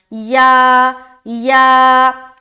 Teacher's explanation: جو اوپر کا تالو ہوتا ہے اس سے ٹچ ہو کر یہ یا ادا ہوتا ہے